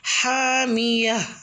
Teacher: گول تا پہ وقف کریں گے تو ہا کی آواز پہ ختم کریں گے